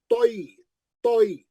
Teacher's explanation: तोय मुस्तालिया का है, मोटा पढ़ेंगे